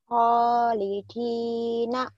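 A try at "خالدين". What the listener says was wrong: Khalidina. Di, jangan dikit. Khalidina. Khalidina.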